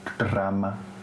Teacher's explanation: So voiceless retroflex stop followed by immediately by voiceless alveolar stop followed by alveolar trill. If you say it fast enough, it just sounds like one trill, which is interesting.